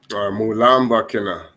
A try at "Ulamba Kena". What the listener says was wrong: Okay, drop M. Ulamba Kena. Ulamba Kena. Also, you can say Mulamba Kena is okay, but Ulamba Kena, that. So you have two options. You can either say Mulamba Kena, Ulamba Kena Lamba, Ulamba Kena, that's for me the most correct.